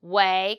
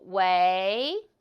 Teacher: And the first pronunciation is second tone. So we do way, go up, way. Go up, way.